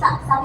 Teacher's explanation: sa ini ternyata termasuk ke dalam rakwah yaitu ada suara yang mengalir · termasuk ke dalam Hames ada yang mempunyai nafas dan angin · tidak adanya suara yang naik ke langit-langit mulut